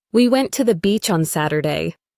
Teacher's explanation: We went to the beach on Saturday. Stressed, went, beach, Saturday.